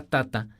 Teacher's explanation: la palabra tata, con tono bajo, significa medicina